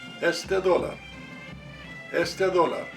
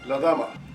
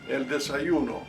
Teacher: For example, if we speak fast, it sounds softer. The letter D in group 1, when appears at the beginning of the word, changes to the English TH just by adding another word in front.